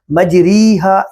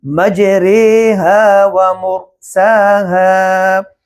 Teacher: اس کا درست طریقہ یہ ہے کہ را میں امالہ کیا جائے گا، اور وہ یہ ہے کہ نہ تو زبر کی آواز ہو نہ زیر کی آواز ہو، ان دونوں کے بٹوین